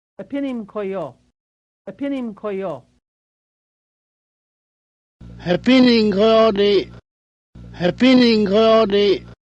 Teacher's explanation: So the first word ends with an M and the next word starts with a K. You still have to blend these two words together with the ng sound.